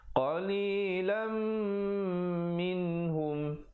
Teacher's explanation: izhar halqi, nun mati bertemu ha, jangan panjang